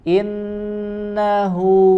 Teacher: nun bertasydid ya, ada tambahan dengung, tambahan gunnah pada bacaan huruf nun di sini ya, ada nun tasydid tidak tergesa-gesa jadi innahu, tapi innahu ya, setelah huruf nun ada huruf ha lagi ya, huruf ha lagi dari pangkal tenggorokan, sempurnakan hu ya, sambil memonyokkan kedua bibir kita.